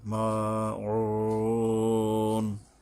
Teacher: আইন গলা চেপে সাবধান উচ্চারণ করতে হবে এবং তিন আলিফ টেনে শেষ করতে হবে। মাউন, আইনের পরে ওয়ার উপরে তিন আলিফ টানতে হবে